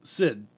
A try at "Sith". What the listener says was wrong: Sith. You said Sid.